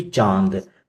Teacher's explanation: तो अनुनासिक का संबंध होता है नाक और मुख दोनों से। यहां पे जिन वर्णों के उच्चारण में वायु नाक और मुख दोनों से निकलती है उन्हें अनुनासिक कहते हैं